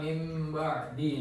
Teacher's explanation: nun sukun atau tanwin diubah menjadi suara mim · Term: iklab